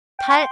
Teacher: 달 ends with final leer. Your tongue touches lightly, and the sound is like a clean Korean L at the end. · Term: final 리을